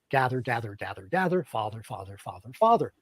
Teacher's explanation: in general American the length is roughly the same American gather is longer than mine and American father is shorter than mine